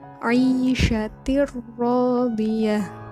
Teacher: Nah, di situ huruf ta berharokat tanwin bertemu dengan ro, maka huruf tanwin itu dimasukkan ke dalam ro dengan tanpa dengung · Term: idgham bila gunah